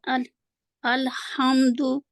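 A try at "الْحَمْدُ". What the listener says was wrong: लाम को हलाना नहीं, मखरज में रहे।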